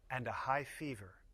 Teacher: The voice goes down on the last item in the list. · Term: Intonation of lists